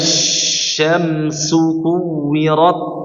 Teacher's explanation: Itu tafasyi pada huruf shin diluasin aja, diberikan aliran yang banyak ya. Jadi enggak terburu-buru untuk mengucapkan huruf setelahnya dulu, enggak apa-apa.